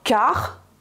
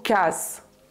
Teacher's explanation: on entendra ce guttural qui vient de la gorge · en vantais et à Groix, on entendra ce R guttural qui vient de la gorge, donc car, alors qu'en qualité standard, on entendra plutôt casse.